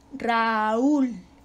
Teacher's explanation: una fuerte con una débil pero la sílaba tónica cae en la débil